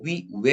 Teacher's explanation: 입술을 동그랗게 만 상태에서 시작해가지고 다른 소리로 옮겨가지 않나요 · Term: 이중모음